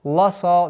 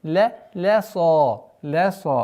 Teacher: Хотелось бы обратить внимание, чтобы лям не подчинился твердости сад.